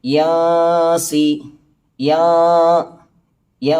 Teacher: നൂനിൻ്റെ മഖ്റജിനെ മറച്ചുകൊണ്ട്, കൃത്യമായി നൂനിൻ്റെ മഖ്റജിൽ കൊണ്ട് നാവ് വെക്കാതെ അഥവാ മറച്ചുകൊണ്ട് അവിടെ കുറച്ചു നേരം മണിക്കണം. അഥവാ എൻ എന്ന് പറയാതെ യാ എന്ന് പറയണം എന്നർത്ഥം. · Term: ഇഖ്ഫാ